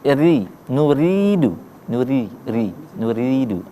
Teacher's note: huruf ora itu dibaca tipis, tarqiq. Karena apa? Huruf ora-nya berbaris bawah kasrah. · Ketika ini kita baca berbaris i, berarti menjadi ri, nuridu, nuridu, ya, paham ya? Kita baca agak panjang karena mad tabi'i di situ ya.